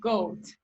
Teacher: it's mid-high and it's towards the back and then you have the oh counterpart which is right so